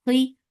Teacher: for Kasra, give E sound and make Kha heavy